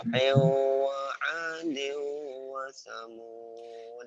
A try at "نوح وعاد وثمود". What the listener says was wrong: Itu kamu suka nadanya rendah lagi. Nuhin wa adin wa thamud. Kalau rendah kamu kesan nadanya nada naik turun gitu ya. Nuhin wa adin wa thamud. Jadi nggak stabil suaranya.